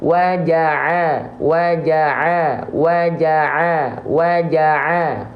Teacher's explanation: pastikan keluar dari bagian tengah tenggorokan kita dan jalur alur suaranya itu dari tengah tenggorokan ke mulut tidak ada yang masuk ke dalam rongga hidung kita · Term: Ain